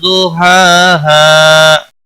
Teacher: ضحاها ضاد حروف مستعلیہ میں سے پر پڑا جائے گا، ہا کے اوپر کھڑی زبر ہے، 1 الف کے برابر کھینچ کر پڑھیں گے، اور اس ہا کو وقف کی صورت میں 1 الف کے برابر کھینچ کر وقف کریں گے۔